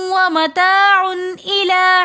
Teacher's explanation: 2 پیش کی تنوین کے بعد حروف ہلکی میں سے حمزہ آ رہا ہے تو ہم یہاں پر غنہ نہیں کریں گے